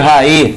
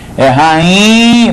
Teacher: Porque o NH dá uma nasalizada no I aí. Então, rainha não tem acento porque o NH nasaliza o I anterior.